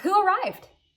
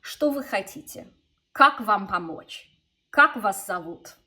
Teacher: that's how you ask a question in Russian with a question word, is it's a downward intonation.